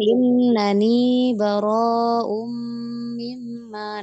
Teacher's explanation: Bara'um yang pertama karena tanwin bertemu mim. Idgham bi gunnah ya, masuk dengan dengung.